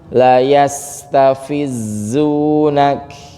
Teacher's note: Sin sukun nih rokhawah ya. Jadi panjang juga ini sukunnya, jangan sampai terlalu cepat. Pelan-pelan saja.